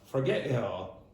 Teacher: you'll have the glottal stop at the end of forget and of it.